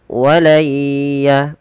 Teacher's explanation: kita langsung masukkan suara nunnya kepada huruf ya karena di sini ada bacaan Idgham bhunah yaitu ketika terjadi ketika